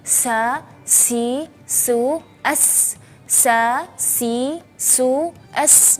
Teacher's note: Jadi kita merasa angin ketika pelafalan huruf sin itu sangat kencang karena memiliki dua sifat, yaitu sifat hams dan sifat safir.